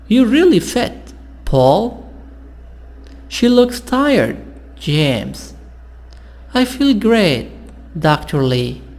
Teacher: There is usually falling intonation and a pause before the name. So here, before the name, before the comma, sound is down and you stop for short time.